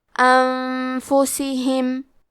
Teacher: اخفاء کا معنی ہے چھپا دینا، تو ہم نون ساکن کو چھپاتے ہوئے اور غنہ کے ساتھ یہ حکم کو ادا کریں گے